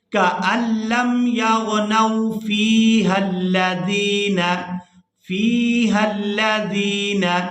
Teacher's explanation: وصل کی صورت میں یہ حمزۃ الوصل گر جائے گا اور ہا کو ہم لام مشدد کے ساتھ ملا کر ادا کریں گے